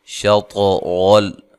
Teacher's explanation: طا کو ہلا کر پڑھنا ہے، موٹا حرف بھی ہے اور قلقلہ بھی ہے۔ را کو موٹا ادا کرنا ہے۔